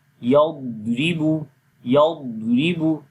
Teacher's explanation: ضاد کے اندر ہم نے صفت استطالت کرنی ہے, صفت قلقلہ نہیں کرنی. اور موٹا پڑھیں گے استعلا بھی, یعنی کہ موٹا, یضربو یضربو.